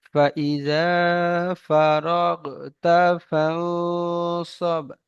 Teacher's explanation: ইকফার গুন্না নাক থেকে হয়